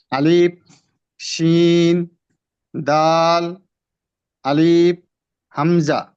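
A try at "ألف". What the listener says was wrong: আলিফের ক্ষেত্রে লম্বা করবো না ভাইজান, একটু খেয়াল করি। আলিফ, আলিফ, আলিফ, বাতাস, বাতাসটা আলিফ এভাবে বলে যাবে না, আলিফ। যখন হরফটা উচ্চারণ শেষ করবেন তখন মাঝখানে একটু হালকা পরিমাণ এই ফাঁকা রাখবেন, ফাঁকা রেখে সরাসরি বাতাস চালু রাখবেন, আলিফ, আলিফ।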